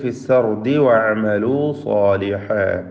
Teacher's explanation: വഅമലൂ സാലിഹാ ചേർത്തോതുകയാണെങ്കിൽ ഫിസ്സർദി വഅമലൂ സാലിഹാ. സ്വാദിനും അലിഫിനും തഫ്ഖീമാണ്. സോ എന്ന ശബ്ദം.